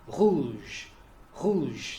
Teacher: French R is a uvular fricative.